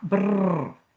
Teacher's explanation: This is an R, but it's a trilled R.